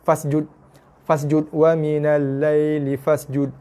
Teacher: Biar lajak sikit bunyi desir pada s. Pada sin. Desiran tu sebab sin bersifat desir bila berbaris mati. Terutamanya bila berbaris mati dan juga berbaris sabdu. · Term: bunyi desiran sin